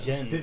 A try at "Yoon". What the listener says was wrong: Stop adding a just sign. It's Yoon. Yes, and J's make multiple sounds.